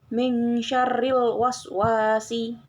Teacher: cara pelafalannya dengan dipanjangkan sebanyak dua harakat yaitu satu tempo